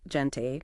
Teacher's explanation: Think of clearing your throat gently. Or a strong, breathy H, but further back. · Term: guttural sound